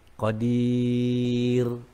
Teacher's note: Ada baris di bawah dal tu, maka dia nipis bunyinya.